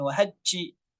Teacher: isyarat huruf jim agar dijaga sifat jaharnya. Jangan sampai dihameskan